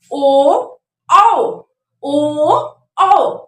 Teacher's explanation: अब ओ और औ का जो उच्चारण स्थान है वो कंठ और ओठ से माना जाता है।